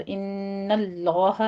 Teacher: इन्नल्लाह में नून मुशद्दद है, गुन्ने वाजिबा करना है, आगे लफ्ज़ जलाला को पुर पढ़ना है।